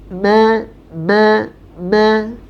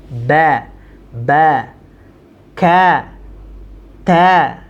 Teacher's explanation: Di sini ada yang bergetar nih teman-teman di bagian hidung kita